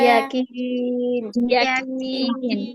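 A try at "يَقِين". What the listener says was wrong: আপু ইয়াকিন হবে না, কফটা মোটা হবে। ইয়াকিন। ইয়াকিন।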